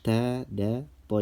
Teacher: Ujung lidah bertemu dengan tempat tumbuhnya gigi seri atas